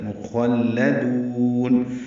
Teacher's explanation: سے ادغام ہوگا، ادغام ناقص ہے، غنہ کریں گے، ولدان مخلدون، خوا پر پڑھیں گے لیکن لام باریک پڑھیں گے